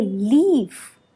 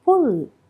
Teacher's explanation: The L in leaf is produced in the front part, whereas the L in pull is in the back